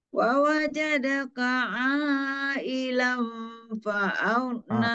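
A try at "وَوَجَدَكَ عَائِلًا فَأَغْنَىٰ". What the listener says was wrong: A-nya kurang panjang. A-nya masih 2 harakat, kurang panjang, Bu.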